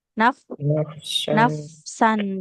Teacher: fa-nya mengalir dulu sempurna baru ke sin ya